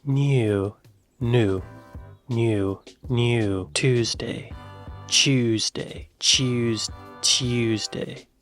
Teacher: I guess they are saying the T, but there's a Y sound in there, right?